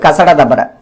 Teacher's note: வல்லின எழுத்துக்கள் பார்த்தீங்கன்னா மார்பை இடமாக கொண்டு பிறக்கின்றன. வல்லின எழுத்துக்கள் கசடதபர ஆகிய வல்லின எழுத்துக்கள் மார்பை இடமாக கொண்டு பிறக்கின்றன.